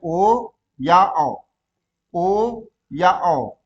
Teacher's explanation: अगर कंठ और ओष्ठ का दोनों का प्रयोग आपको देखना हो तो आप जो है ओ और औ को देख सकते हैं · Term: कंठोष्ठ